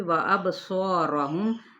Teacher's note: صاد حروف متعلیہ میں سے، الف اس کے تابع ہو جائے گا، موٹا ہی ادا کریں گے الف کو بھی